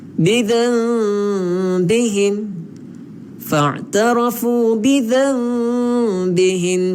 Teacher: Kita nak menukarkan nun ni kepada mim lah. Sebab tu di atas dia ada tanda mim, mim kecil. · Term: iqlab